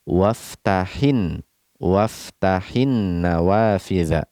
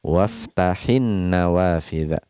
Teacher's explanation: Ketika domir ya'ul mukhatabah berharokat sukun ini bertemu setelahnya dengan al, nah, pada an-nawafidha, maka di sini kita tidak baca panjang, kita tidak baca mad pada kata waftahi, nah, ya, tapi kita langsung baca tanpa mad.